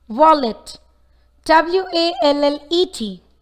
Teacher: The word wallet has two approximate consonant sounds, W and L.